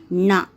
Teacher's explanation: நாவின் நுனி மேல்வாய் அன்னத்தின் நடுப்பகுதியை தொடுவதால் பிறப்பது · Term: 3 சுழி நா